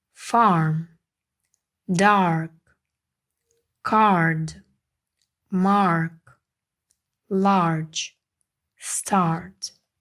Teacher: ми вже бачимо в нас є R і це означає що звук подовжений подовження позначається двома крапочками а Farm Dark Card Mark Large Start